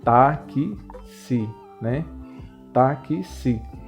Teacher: E tem apenas 4 letras. O X ele tem uma pronúncia como se fosse dois sons